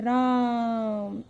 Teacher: रा को लंबा खींच रहे हो और मो नॉर्मल है, तो राम, यह है प्लुत स्वर कहलाते हैं।